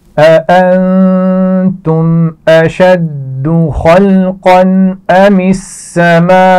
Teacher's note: اشد آسان لفظ ہے. خلقن خا اور قاف کو موٹا پڑا جائے گا. · أأنتم نون پر غنہ کیا جائے گا.